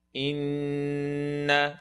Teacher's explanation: You have the noon, full nasal sound.